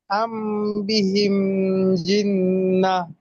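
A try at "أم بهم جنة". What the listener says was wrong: আম বিহিম না, আম বিহি। হাতে টান আছে।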